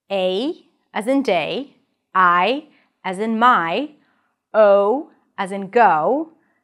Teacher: vowels that change from one sound to another within the same syllable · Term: diphthongs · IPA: /eɪ/